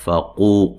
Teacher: قاف کو موٹا ادا کرنا اور یہ واو مدہ ہے